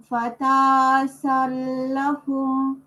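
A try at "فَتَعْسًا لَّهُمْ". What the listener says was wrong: এই যে আবার আইনের উপরে সুকুন, ফাতাসালু।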